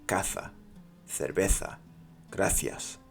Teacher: the S and the zed and the c sounds like a th. All of them sound like a th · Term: th sound